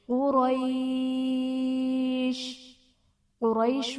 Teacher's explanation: قاف حرف مستعلیہ ہے، اسے ہم پر پڑھیں گے۔ را پر زبر ہے، را کو بھی پر پڑھا جائے گا، اور یا ساکن سے پہلے زبر ہے تو یہاں پر یا لین کا قاعدہ ہے۔